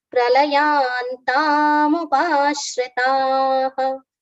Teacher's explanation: It will make the short sound for ta, which is not correct. So we have to first completely pronounce the letter ta with long sound and then come to the visarga pronunciation